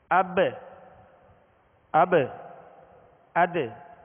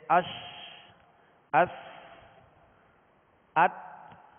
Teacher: قلقلہ، قلقلہ کا معنی ہے جنبش، لوٹنا، اور حروف قلقلہ کو ادا کرتے ہوئے مخرج میں آواز لوٹتی ہے، لگ کر لوٹتی ہے